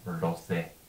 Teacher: It's not Q, it stands for a sound RD, which is a sound that doesn't exist in English. That's a voiced retroflex plosive, phonetically speaking. So just the main point is don't be tempted to say quose, it's RDose.